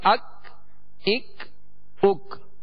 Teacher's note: یہ ڈنڈی والا کاف تھا جو باریک پڑھا جاتا ہے اور اس میں قلقلہ نہیں کریں گے